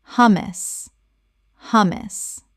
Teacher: The H is pronounced and the first syllable is short, like the word hum.